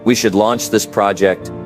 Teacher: That rising tone at the end makes you sound unsure. Even when you're not. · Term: upspeaking